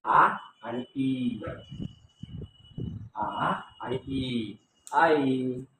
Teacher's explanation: मग आय, आय आय चं उच्चारण स्थान आहे कंठ तालव्य, कंठ तालव्य. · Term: संयुक्त स्वर